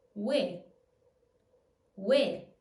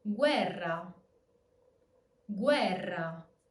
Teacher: since the E is stressed, it's going to keep its normal E pronunciation and it's not going to turn into a Y sound.